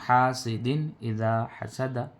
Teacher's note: دال کے نیچے دو زیر کی تنوین ہے اور اس کے بعد حروف حلقی میں سے حمزہ آیا، تو نون کی آواز کو بغیر غننے کے پڑھ رہے ہیں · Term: اظہار